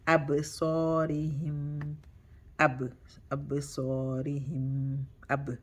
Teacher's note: So it's qalqala sughra, which is small qalqala. Ab, and remember bouncing because ba is a flat letter, you bounce with a flat mouth.